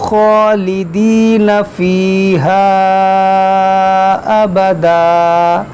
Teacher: یہاں پر مد منفصل ہے، الف مدہ کے بعد حمزہ دوسرے کلمے میں ہے